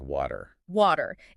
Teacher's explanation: Instead of doing a hard, explosive burst of air, your tongue just lightly taps the bumpy area right behind your upper teeth. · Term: flap T